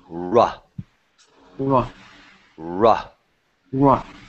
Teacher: you bring the tip back in your mouth as far back as you can make it go